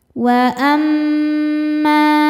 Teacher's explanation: mim tasydidnya hukumnya gunnah musyaddadah karena mim bertasydid. Cara bacanya berdengung, tahan dengungannya kurang lebih 2 harokat.